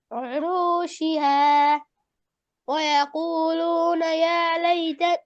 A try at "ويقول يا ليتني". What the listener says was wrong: ويقولون নাই ভাই ويقول يا ليتني